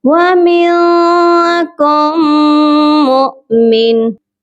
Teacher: साकिन वाला हमज़ा है, इसीलिए यहाँ पर झटका देकर पढ़ा जाएगा।